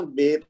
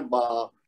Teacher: لیکن جو اے والی ساؤنڈ ہے نا جہاں پہ اردو میں، تو اس کو ہم نے آ والی ساؤنڈ بنانا ہے. بس یہ ذہن میں رکھ لیں، کوشش کرنی ہے کہ تاکہ جب بھی ایسا حرف ہے تو اس کو ہم نے آ کے سٹائل میں پڑھنا ہے.